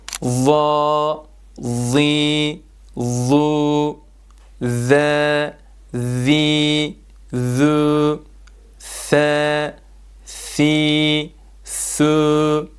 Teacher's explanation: Bu harfler okunurken dil ucu üst ön dişlerin başlarından biraz dışarı çıkarılarak ses peltekleşir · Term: Peltek harf